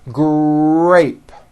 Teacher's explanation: in the word grape the r sound is stronger and you even hear it more than the G sound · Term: R Blends